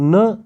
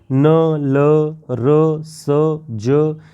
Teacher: मूल में जाके जीवा वहां टच होती है स्पर्श होती है न ल र स ज यह सारे वर्ण जीवा दंत मूल में जाकर टकराती है · दांत जहाँ से उगता है उसके मूल में जाके जिह्वा वहाँ टच होती है, स्पर्श होती है। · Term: वर्स